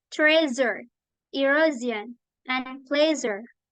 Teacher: yaitu hasil dari sh, tetapi ditambah getaran menjadi kayak Z tapi beda